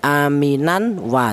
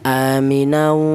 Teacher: di situ ada dengungnya dua ketukan atau ada ada suara berdengung ya. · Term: idgham bighunah